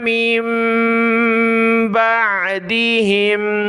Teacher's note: بڑی میم کو چھوٹی کے ساتھ ملایا، ناک میں آواز پیدا ہوگی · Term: چھوٹی میم